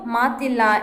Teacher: ಎಂಬುದು ಉತ್ತರ ಪದ ಮಾತು ಪ್ಲಸ್ ಇಲ್ಲ ಇಸ್ ಈಕ್ವಲ್ ಟು ಮಾತಿಲ್ಲ ಎಂದಾಗುತ್ತದೆ ಮಾತು ಹೇಳಿದಾಗ ಅಲ್ಲಿ ಉಕಾರ ಸಿಗುತ್ತದೆ ಮಾತಿಲ್ಲ ಎಂಬ ಪದದಲ್ಲಿ ಉಕಾರ ಲೋಪವಾಗಿದೆ